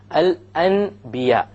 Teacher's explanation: instead of pronouncing the n sound you pronounce the MM sound